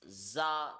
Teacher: there is the z sound in it and it has a kind of a whistling sound so it should be read with force it is the okay